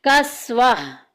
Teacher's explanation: क्योंकि गोलता आ गई है, तो गोलता में जब भी वक्फ करते हैं तो वक्फ करने की सूरत क्या होती है कि गोलता को हाय साकिना से बदल देते हैं